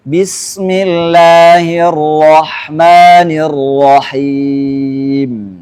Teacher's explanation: Getarannya cuma sekali saja. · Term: takrir